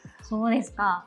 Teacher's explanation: そ う で す か should be said with a falling intonation or pitch, so that it's said as a statement rather than an actual question